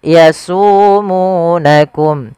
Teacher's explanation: Maka cara membacanya yaitu kita baca dengan panjang mad tabi'i, yaitu su dan mu 2 harakat